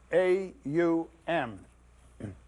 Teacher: starts in the back of the mouth then fills the mouth cavity and closes at the lips. When properly pronounced, you have made all the noises.